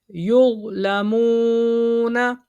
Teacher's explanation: یہ واو مد ہے. ٹھیک ہے. واو ساکن سے پہلے پیش، اس کو کھینچیں گے